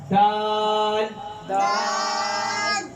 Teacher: یہ حروف زبان کی جڑ، تالو کے زبان کی نوک اور اوپر والے دانتوں کی جڑ سے نکلتا ہے۔ زبان کی نوک اوپر والے دانتوں کی جڑ سے نکلتا ہے